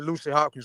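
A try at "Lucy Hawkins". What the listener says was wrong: See, it sounds like you're saying Lucy Hopkins and not Hawkins. So which one is it? It's Hawkins?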